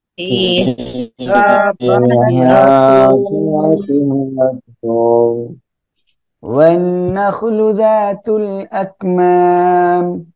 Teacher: ইদগামে বা গুন্না গুন্নার সাথে মিলিয়ে পড়বো